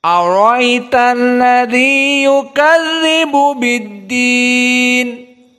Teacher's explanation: Berarti hamzahnya dibuang, yang tersisa tinggal ya. Ra bertemu dengan ya. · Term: isqatil hamzah